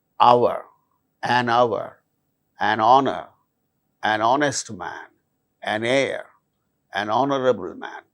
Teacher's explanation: In all these cases, these words begin with H, which is a consonant letter, but H becomes silent and these words produce initially vowel sound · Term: silent H